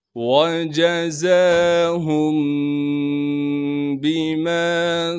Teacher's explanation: یعنی اخفا کے ساتھ، اس با کو بغیر کھینچے پڑھنا ہے، میم کے بعد الف مدہ ہونے کی وجہ سے میم کو ایک الف کے مقدار کھینچیں گے